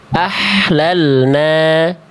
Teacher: Harusnya H kecil itu karakter nafasnya berbisik. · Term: hak kecil